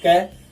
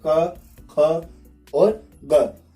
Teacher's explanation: हम कै बोलते हैं, कै तो उसमें बीच वाला हिस्सा जीभ का ऊपर उठता है, लेकिन जब ये क बोला जाता है तो मुख के एकदम गहराई से आवाज निकलती है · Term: जीवा मूलीय ध्वनियों